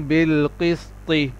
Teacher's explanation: طو کا مخرج یہ ہے کہ جب زبان کی نوک اوپر کے دو تادوں کی جڑ پر لگے تو اس سے طو ادا ہوتا ہے، یعنی بالقسط.